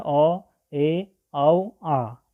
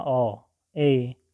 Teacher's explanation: आ की तरह ऐसे नहीं खुलेगा, अर्धविवृत आधा मुंह खुलेगा